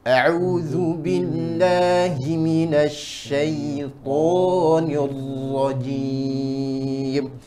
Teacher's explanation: Getarannya ro tidak boleh seperti R, kasar seperti R, seperti huruf R